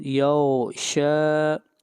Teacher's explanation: شین کے اوپر کھڑی زبر، شین کو کھینچ کر پڑھیں گے ایک الف کے برابر